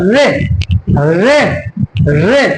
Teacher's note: जीव आप देख रहे हैं तालू से भी ऊपर जा रही है मूर्धा से टकरा रही है इसीलिए ये कैसी ध्वनि है मूर्धन्य ध्वनि या मूर्धा स्वर ध्वनि